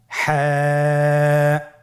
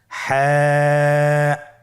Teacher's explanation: হা হরফটি উচ্চারিত হবে কণ্ঠনালীর মধ্যখান হতে। গলা চিপে ধরে আপনি উচ্চারণ করুন।